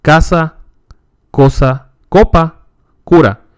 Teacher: Notice it's a K sound. Unlike the English K sound, the hard Spanish se is not aspirated. That is, no air is expelled when it is pronounced.